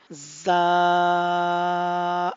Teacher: लेकिन आपने ये देखा होगा इसके शुरू में जब हम इस लेटर को पढ़ रहे हैं तो थोड़ा सा सख्ती वाला जो साउंड है, जो आवाज है, वो आ रही है, यानी बजिंग साउंड आ रहा है